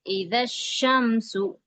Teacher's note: شین پہ تشدید ہے، تو لہذا زال کو شین سے ملا کے پڑھیں گے. اذا الشمس، اس طرح سے پریکٹس کیجیے.